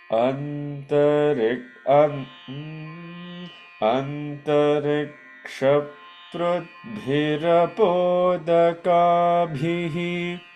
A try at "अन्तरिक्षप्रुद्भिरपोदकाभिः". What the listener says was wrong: You are saying prudbhi. It is prud, d, da, ennada, da.